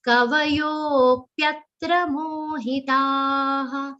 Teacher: Yo is a long sound. Complete the long sound and the avagra. So it has to be fairly long.